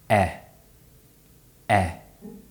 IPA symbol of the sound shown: e